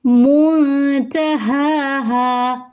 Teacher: نون ساکن کے بعد تا ہے تو اخفا ہو رہا ہے، ہا ہا دونوں لمبے ہوں گے کیونکہ ایک پہ الف مدہ ہے اور ایک پہ کھڑا زبر ہے۔